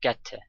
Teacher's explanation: get and two are linked together the single T and the vowel in two is reduced